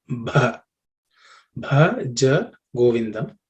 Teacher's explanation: the Bha is aspirated consonant. So the fourth letter in the Pa Varga.